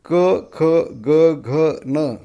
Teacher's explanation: क ख ग घ न हे घशातून स्वर निघत आहेत.